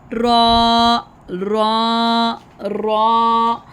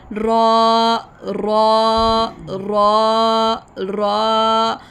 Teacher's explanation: When pronouncing raw, the tip the tongue touches the gums behind the upper teeth and makes a light tap or slight vibration. इनके हल्की सी vibration जैसे होती है ना, वैसे इसकी रा की साउंड आएगी।